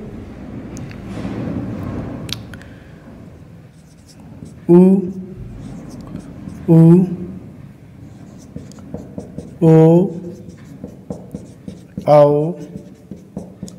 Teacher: तो इन वर्णों को बोलने में हमारी क्या हो जाती है होठों की आकृति वृत मुखी हो जाती यानी कि गोलाकार हो जाती है